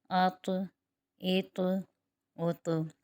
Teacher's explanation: یہاں پر طا جو ہے وہ حروف مستعلیہ میں بھی ہے اور حروف قلقلہ بھی ہے، اور ساکن ہو رہا ہے تو یہاں پر حروف قلقلہ ہوگا